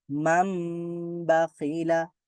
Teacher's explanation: বলেছিলাম যে ইকলাবের হরফ হচ্ছে বা তো এখানে যেহেতু বা আছে নুন সুকুনের পরে ন সাউন্ডের পরে বা আছে এজন্য ন সাউন্ডটা ম সাউন্ড হয়ে যাবে